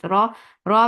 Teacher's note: so you're lifting your back of your tongue up towards your pallet